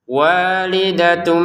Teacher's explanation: walidatun bertemu ba dibaca dengan samar